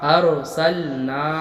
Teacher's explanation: ارسلنا، حمزہ را زبر ار، سین لام زبر سل، اور نون علی زبر نا، ارسلنا۔ را ساکن سے پہلے زبر ہے، را کو پر پڑھیں گے